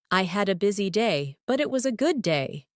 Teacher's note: Notice how your voice rises slightly at busy day and falls softly at good day. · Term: intonation